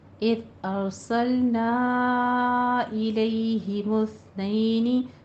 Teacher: ساتھ آپ نے یا لین ادا کرنی ہے، الیہ، ٹھیک ہے، ارسلنا میں را کو پر پڑھنا ہے ، نا پہ مد منفصل جائز ہے، 4 کاؤنٹ کرنا ہے،